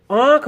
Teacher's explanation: समय जो मुख विवर से जो मुख से बाहर निकलती है हवा वह नाक और मुख दोनों से बाहर निकलती है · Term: अनुनासिक